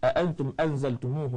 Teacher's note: Saya dengar tadi bacaan sebutan ikhfa, cara bacaan dia adalah kita menjauhkan lidah, ujung lidah daripada makhraj ketika kita mendengungkan ikhfa. Jauhkan.